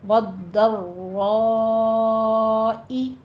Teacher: ضاد کہتے وقت آپ نے زبان کی کروٹ اوپر داڑھوں کے ساتھ لگانی ہے، سختی کے ساتھ · را بھی مفخم پڑھی جائے گی اور آگے مد متصل واجب ہے